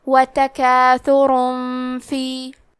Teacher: ہم تنوین کو چھپاتے ہوئے اور غنہ کے ساتھ یہ حکم کو ادا کریں گے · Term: اخفاء